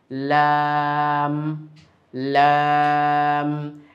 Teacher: জিহবার আগার কিনারা সামনের উপরে দাঁতের মাড়ির সঙ্গে লাগিয়ে উচ্চারিত হয়।